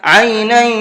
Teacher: عینا یشرب بها المقربون، عینا، یہاں یہ تنوین ہے اور تنوین کے بعد میں یا آ رہا ہے تو یہاں تھوڑا سا غنہ کر کے پڑھیں گے